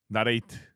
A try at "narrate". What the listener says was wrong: 우선 나가 아니에요. narrate. 나레이트는 아니다.